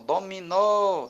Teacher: O mi é a penúltima sílaba e o dó é a antepenúltima. Quando eu digo a palavra dominó, fica claro aqui que a sílaba tônica é a última.